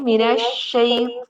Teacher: मिनश्शैतानिर, पौ, इसको आपने मोटा करना है, इसका मखरज आगे जाकर आप इंशाअल्लाह से पढ़ेंगे, लेकिन इतना याद रखिए इसे मोटा करना है। और मोटा करते हुए आपके होंठ गोल नहीं होंगे, बल्कि आपकी जो जुबान की जड़ है ना, पिछला हिस्सा जुबान का, वो ऊपर तालू की तरफ उठता है।